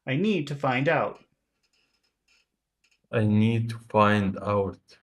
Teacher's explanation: Try to do that rhythm of small, big, small, big, small.